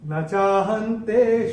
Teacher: ये जो विसर्ग आ रहा है चरण की समाप्ति पे इसका उच्चारण केवल और केवल ह ही होगा।